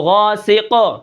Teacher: قاف کی آواز کو ہم ظاہر کریں گے کیونکہ قاف کے اوپر وقفاً قلقلہ ہوتا ہے